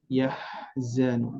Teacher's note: Dari huruf H dia mempunyai sifat lirih ya, bunyi hembusan angin.